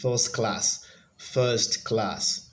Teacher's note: first class so that has the stress on the first syllable